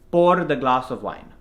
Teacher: what I bet you're doing is rolling the r a little too much